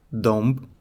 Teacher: The final b is devoiced